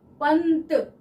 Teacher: यहाँ पे आ रहा है पंत। पंत, त जब पंत बोल रहे हैं तो ध्वनि जो है वो दांतों के पीछे से जीभ को टच करके आ रही है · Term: अनुस्वार